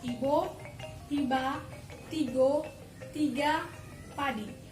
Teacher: Fonem I adalah vokal tinggi depan yang diucapkan dengan kedua bibir agak terentang ke samping